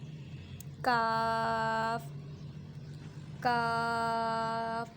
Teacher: کاف کہنے کو تو یہ باریک حرف ہے، مگر یہ تالو کے سخت حصے سے ادا ہوگا۔ اب اس کی آواز جو ہے وہ باریک نکلے گی، کیونکہ یہ تالو کے سخت حصے سے جا کے زبان کی جڑ لگے گی، تو یہ کاف جو ہے باریک سے نکل کر آئے گا۔